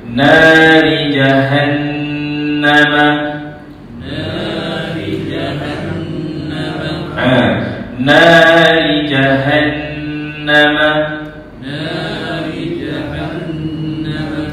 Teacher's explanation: Maka wajibal ghunnah wajib dibaca secara dengung dua harakat. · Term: wajibal khunnah